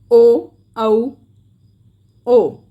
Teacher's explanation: जब हम ओ बोल रहे हैं, ओ का उच्चारण कर रहे हैं, तो ओ गले से तो साउंड आ रहा है, लेकिन जो आगे हमारे ओष्ठ हैं वो एक सर्कल बना रहे हैं · कंठोष्ठ है, इसका उच्चारण गले व होठ से होता है,